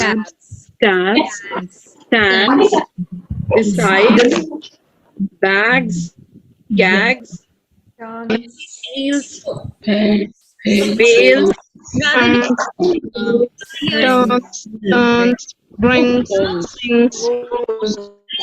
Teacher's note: Because they are having a voiced consonant, so they are not giving the sound of S, but they are giving the sound of letter Z.